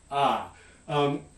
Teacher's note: the low back unrounded vowel ah